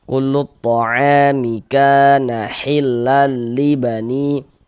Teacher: Maka huruf yang memiliki tanda baca fathahnya itu kita baca panjang. Sehingga ka dibaca panjang. Mad tabi'i panjangnya 2 harokat.